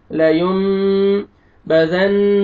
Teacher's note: نون مشدد ہے آپ نے غنہ کرنا ہے · نون ساکن کے بعد با آ رہا ہے آپ نے نون کو میم میں چینج کر کے اخفا کرنا ہے نوز میں ساؤنڈ لے کے جانا ہے